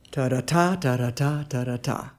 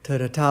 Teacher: light, light, heavy is an anapest